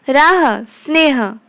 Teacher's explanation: ह सघोष है, पर शब्द के अंत में सामान्य रूप से इसका अघोष उच्चारण हो जाता है